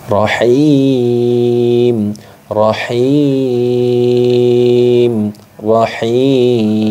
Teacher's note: boleh dibaca panjang satu Alif dua Alif atau tiga Alif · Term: Mad Arid Lis sukun